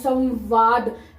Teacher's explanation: संगठन लेकिन जब हम इसको तोड़ेंगे तो सम आएगा संवाद क्योंकि ये व की जो साउंड है व दांतों के पीछे से आ रही है